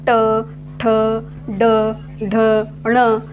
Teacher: जिभेचा शेंटा कसा होतोय जिभेचा शेंटा हा मूर्धेला जाऊन स्पर्श होतोय · तुम्हाला लक्षात येईल जिभेचा शेंटा नेमका मुखातील कोणत्या भागाला स्पर्श होतोय तर मूर्धा भागेला स्पर्श होतोय म्हणून यांना त्यांना काय म्हटलेल आहे मूर्धन्य वर्ण असे म्हटलेलं आहे. · ट अल्पप्राण मूर्धा आहे ठ महाप्राण मूर्धा आहे. ड अल्पप्राण मूर्धन्य आहे. ढ महाप्राण मूर्धा आहे. ण काय आहे अल्पप्राण प्लस अनुनासिक आहे प्लस काय आहे तो मूर्धा आहे.